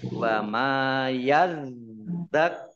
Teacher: Wa ma yadzakkaru, mim fathah alif mat tobi'i panjang 2 harokat. Dalnya dibaca double, ada tasdidnya. Kemudian kafnya juga dibaca double, ada tasdidnya.